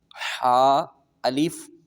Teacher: اس کو ہم نے حلق کے درمیان والے حصے سے ادا کرنا ہے. جیسے ہم ٹھنڈا پانی پیئیں اور منہ سے آواز نکلتی ہے ہمارے حلق سے یہ والی آواز، تو ہم نے اس طریقے سے ہم نے اس کو پڑھنا ہے کہ حلق سے ہم نے اس کو ادا کرنا ہے.